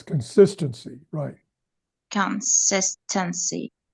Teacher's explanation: So the stress is the syllable sis, right?